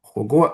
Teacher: So these two syllables have the second tone, which has this high-low contour, and the first tone. So, but the first one with the high-low contour is interpreted as stress